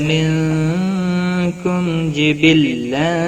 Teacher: میم ساکن کے بعد جیم آیا ہے، اظہار شفوی ہوگا، گنہ نہیں کریں گے